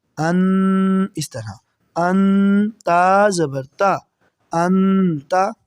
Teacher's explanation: نون ساکن کے بعد تا ہے جو کہ حروف حلقی میں سے نہیں ہے بلکہ حروف اخفا میں سے ہے تو یہاں بھی ہم غنہ یہاں پر کریں گے